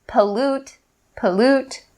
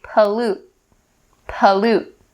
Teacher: typically, native speakers will make the stop T sound